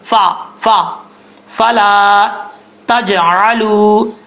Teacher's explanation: کیا گیا الف ہے، 1 الف کی مقدار لمبا کریں گے، فا کا مخرج ہے اوپر والے دانتوں کا کنارہ نیچے والے ہونٹ کی تری والی جگہ پہ لگے گا تو فا پڑھا جائے گا ، بعض اوقات اس کو ہونٹ گول کر کے پڑھتے ہیں،